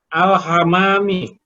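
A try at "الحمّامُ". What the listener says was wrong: Kenapa harokat mimnya kasroh? Alham. Alhammamu. Mimnya ditafsirkan, Pak.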